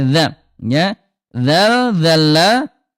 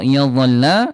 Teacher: Sama-sama ujung lidah disentuhkan dengan ujung gigi seri atas. Cuma yang membedakan ibunda kalau dzal dia istifal turun pangkal lidahnya. Kalau d istiam terangkat pangkal lidahnya.